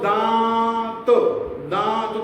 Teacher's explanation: मुंह से ज्यादा आवाज निकाल रही है और नाक से कम निकाल रही है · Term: अनुनासिक